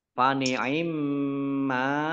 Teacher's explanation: mim sukun, mim tasdid, dibaca gunah atau mendengung, ditahan 2 harokat